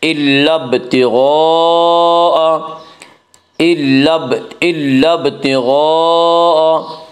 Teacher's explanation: غین کو پر پڑھیں گے، غین حروف مستعلیہ میں سے ہے، حروف مستعلیہ 7 ہیں جن کا مجموعہ خص ضغط قز ہے، یعنی خا، صاد، ضاد، غین، طا، قاف، ظا، یہ 7 حروف ہیں، انہیں حروف مستعلیہ کہتے ہیں، یہ ہمیشہ ہر حال میں پر پڑھی جاتی ہیں۔